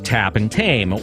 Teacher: T usually denotes the voiceless alveolar plosive